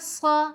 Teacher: صاد میں اطباق کی بھی صفت ہے، خوب موٹا کر کے پڑھیں گے، جیسے صاد زبر صا۔